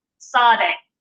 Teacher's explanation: And this letter is pronounced s. So it's an S sound, but it has a T on the front of it.